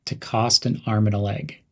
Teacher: the word and to n cost an arm and a leg emphasize the words arm and leg